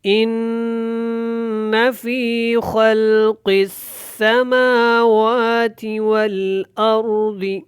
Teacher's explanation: شد ہے، تو یہاں پہ غنہ کریں گے، اور خاء موٹا ہے، قاف یہاں پہ موٹا ہے، سین کے ساتھ اچھی طرح ملانا ہے۔